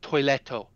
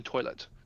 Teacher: They will add that extra O to the end because all of their letters have a vowel sound after them.